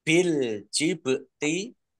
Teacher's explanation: Bil jibti alif lam komariah ditandai lamnya dibaca sukun. Bak sukun bacaan kol-kolah dibaca memantul, ditampakkan pantulannya.